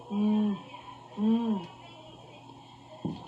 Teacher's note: So there's still bilabial nasal